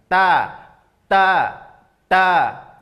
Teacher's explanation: keluar dari situ ya bisa dirasakan di di dalam ya berarti ujung lidah terasa bertemu dengan dagingnya juga terasa bertemu dengan gigi gigi di atas di dalam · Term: huruf ta